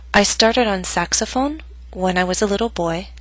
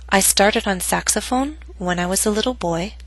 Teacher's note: note that my voice went down on boy but not to its lowest pitch because the statement is not complete